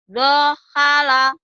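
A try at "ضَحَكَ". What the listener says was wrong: Ini lama Bu, kan nggak ada hamzah gini nah Bu. Ini mah kaf.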